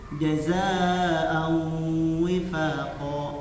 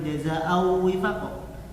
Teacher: Tidak murni au, tapi ada sedikit hidung. Au. Diulang dari jazaa'u wifaqa. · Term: gunnah